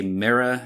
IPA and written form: mɪɹor (mirror)